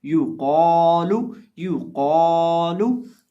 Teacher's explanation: उसके साथ जो अलिफ है उसको भी मोटा करके पढ़ेंगे, क्योंकि अलिफ मोटे हरफ के बाद है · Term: अलिफ को भी मोटा